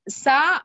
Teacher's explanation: Tha with sa is Mahaprana. The next tha is Alpaprana.